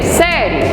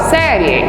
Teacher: O I é semivogal e o E é vogal. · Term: ditongo